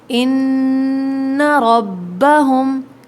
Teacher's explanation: ہماری غلطی کیا ہو جاتی ہے کہ ہم اس کو کھینچ دیتے ہیں جہاں نون مشدد ہوتا ہے، جیسے یہاں دیکھیے ان ربہم، ٹھیک ہے، ان ربہم نہیں، صرف غنہ ہوگا، یہاں کھینچیں گے نہیں